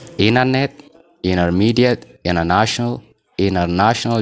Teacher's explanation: isaan maal godhu T kana keessaa baasanii yookaan silent godhanii internet, intermediate, international jedhanii dubbisachuudha. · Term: the vanishing T